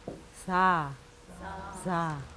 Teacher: 우리나라 사자랑은 다르게 길고 약하게 발음을 하면서 이빨이 여기 이빨에 혀가 닿았다가 바람이 약간 셉니다